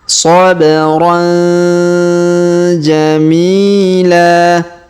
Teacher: tanwin an pada huruf ron-nya bertemu ja maka kita dengungkan dan kita samarkan